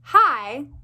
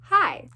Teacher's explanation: that's a glottal stop because it sounds like I'm stopping breath